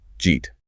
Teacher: Then the eat blends in and the final t on eat often gets held or dropped